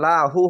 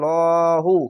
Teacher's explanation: ডান পাশের অক্ষর যদি পেশ বা জাবার থাকে আল্লাহ লেখার তাহলে মোটা করে হবে লহু আর যদি নিচে থাকতো তাহলে লাহু হতো তো এখানে মোটা করে